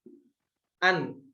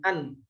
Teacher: masih ada suara yang mengalir setelah kita mengucapkan makhraj nun, an. Karena makhrajnya itu enggak tertutup secara sempurna. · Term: tawassut